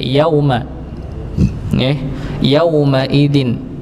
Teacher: maka dibaca pendek Yaum ya yaumidin bukan yaumidin tapi yaumidin ya sekedar masuk pada huruf wau saja tanpa di panjangkan